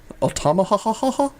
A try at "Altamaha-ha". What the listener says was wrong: Nope, you had one extra ha. Altamaha-ha.